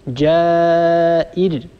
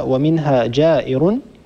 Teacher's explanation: الراء مضمومة تكون الراء مفخمة، لكن إذا وقفنا ستسكن الراء قبلها كسرة والراء الساكنة التي قبلها كسرة هي راء مرققة.